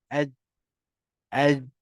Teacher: Jadi ingat boleh lah makhraj dia tengah lidah ke langit atas. Aj, aj. Jadi bila kita lantunkan dia, mesti lidah tu, tengah lidah tu dah takkan duduk atas dah.